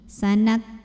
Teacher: pada kaf yang sukun, anginnya keluarnya belakangan setelah suaranya · huruf kaf dari segi suara sifatnya syiddah, jadi ada suara tertahannya ya. Jadi suaranya kuat ya.